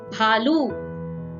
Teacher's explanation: So the next consonant that we are going to learn today is Bha. When we add H or a breath or a strong air in Ba, the previous consonant, it becomes Bha.